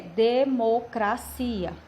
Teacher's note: em português a sílaba tônica é cia